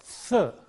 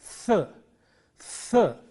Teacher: Th, this sound is th. It is a dental sound produced at the upper teeth. Th, th. The friction is very important here.